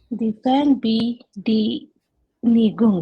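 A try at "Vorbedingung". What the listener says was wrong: Don't read like that. Read it like one word. It's not three different words.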